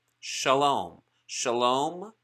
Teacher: look underneath the letter for the vowel and you'll learn that kamatsu belongs to a family of the a vowel pronounced ah